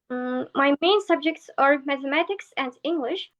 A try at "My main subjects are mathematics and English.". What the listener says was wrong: Pronunciation does feel a little bit staccato, just tiny bit staccato. My main subjects are... My main subjects are mathematics and English. It just feels slightly robotic, just slightly robotic, not fully connected.